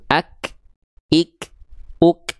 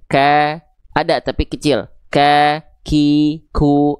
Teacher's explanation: nafas pada huruf kaf itu akan sangat terasa ketika kaf dalam kondisi mati atau sukun.